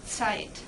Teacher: the Z, which is pronounced like a TS, and S following a T in German.